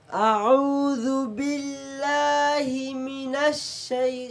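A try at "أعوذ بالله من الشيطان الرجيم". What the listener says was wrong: মনে যেন এক শব্দ এখানে এক শব্দ না দুই শব্দ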